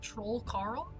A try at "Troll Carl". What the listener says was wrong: Yes, but less of a pause. It's just Troll Carl.